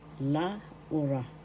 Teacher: First syllable la, second syllable u, third syllable ra. The accent is in the second syllable